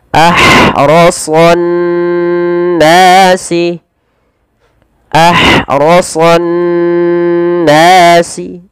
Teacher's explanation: Dan panjangkan nas panjang 2 harakat karena ia mad tabi'i. · Maka juga bisa dikenal dengan idgham syamsiyah. Yaitu alif lamnya diidghamkan kemana? Ke nun, sehingga ditasydidkan nunnya. Maka cara membacanya ditahan suara nunnya. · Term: alif lam syamsiyah